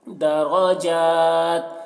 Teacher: را کے اوپر زبر ہے را بھی پر پڑھیں گے